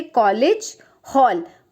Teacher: ये अंग्रेजी से लिया गया स्वर है जिसको हम उच्चारण में ओ बोलते हैं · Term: आगत स्वर